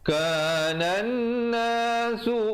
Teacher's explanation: Wajibul gunnah di situ. Kanan nasu dengungkan di situ 2 harakat, wajibul gunnah